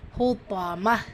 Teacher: இருக்கா சோ இணைக்கிறோம் ஃபில் ஹுத்தாம ஹா லைட்டா ஓதணும் தா ஹெவியா ஓதணும் வசனத்துடைய முடிவுல தா மரபுதா வந்திருக்கு ஹா சாக்கினா மாற்றி ஓதணும்